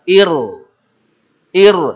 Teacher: ro sukun sebelumnya kasrh itu tipis Nir bir tapi di sini ro sukun meskipun sebelumnya kasrah tetap tebal atau harus tebal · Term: tafkhim